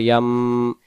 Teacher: না নিয়মটা হলো ইকলাব ইকলাব অর্থ বদল করা কি বদল করা নুন কে বাদ দিয়ে মিম কে দিয়ে বদল করে গুন্না করে পড়া